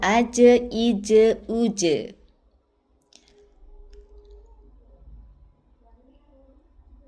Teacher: dia jelas aja ije uje, nggak ada hembusan nafas bun